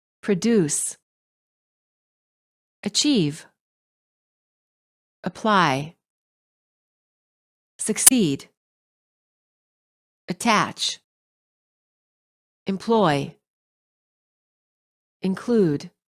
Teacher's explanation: verbs stress the second syllable